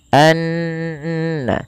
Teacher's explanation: Kemudian pelafal annallaha ada bacaan ghunah yang di mana ghunahnya adalah dimasukkan ke rongga hidung kita suaranya anna ya dan dia ditahan sepanjang dua harakat. · gunnahnya adalah dimasukkan ke rongga hidung kita suaranya anna, ya, dan dia ditahan sepanjang 2 harokat. Hati-hati jangan menebalkan huruf na, karena na sifat pada dasarnya sifatnya tipis.